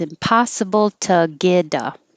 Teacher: the T in get changes to a D, and the A changes to an So now you have impossible to get a.